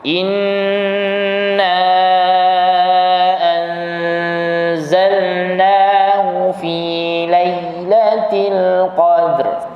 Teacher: Jadi dengung pun sampai ke qadar 2 harakat.